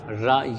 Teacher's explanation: ये आपका जो रा है ना रा ये आपका लुंठित वर्ण है